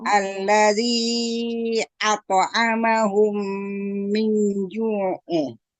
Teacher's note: Iya, pada junya 2 harokat ya jangan kecepatan. Pada ju, jim yang Min ju, jangan ya tapi siap-siap ke makhraj dari huruf jim.